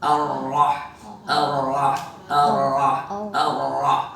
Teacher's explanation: Enggak ada getaran sama sekali. Ada getaran ar itu kan satu getaran